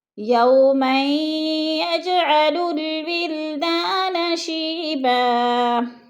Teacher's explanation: ادغام کریں گے یعنی میم کو یا کے ساتھ ملا کر پڑھیں گے · اور یج پہ جو ہے قلقلہ ہے، جیم ساکن ہے اور حروف قلقلہ میں سے ہے تو قلقلہ والے لفظ کو ہلا کر پڑھتے ہیں۔ یوما یجعل الولدان شیبا، ولدان شیبا، ولدا، دا کو تھوڑا سامنے کھینچنا ہے، الف مدہ ہے، شی پہ یا مدہ ہے، یا ساکن سے پہلے شین کے نیچے زیر ہے تو یا مدہ کو تھوڑا سا کھینچ کر پڑھنا ہے۔